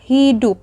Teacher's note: Setelah silabel dup, alofon U direalisasikan dengan lambang U besar karena dup merupakan silabel berkoda